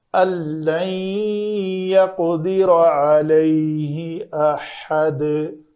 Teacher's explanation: را کے اوپر زبر ہے، اس کو پر کریں گے، قاف ساکن ہے تو اس کے اوپر قلقلہ کریں گے۔